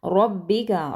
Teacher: रॉ को मोटा पढ़ेंगे, बा को सख्ती से पढ़ेंगे